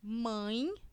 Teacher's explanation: como nós vimos logo acima o a sempre é vogal e esse e é considerado uma semivogal percebam que quando eu falo mãe esse e têm som de i